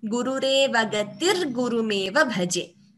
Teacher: So instead of the Visarga, we get R. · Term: Visarga Repha Sandhi